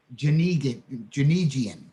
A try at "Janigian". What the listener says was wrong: Very close, hard G, Janigian.